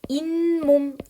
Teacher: 잇몸 이렇게 니은이 갑자기 첨가가 되어서 소리가 나게 돼요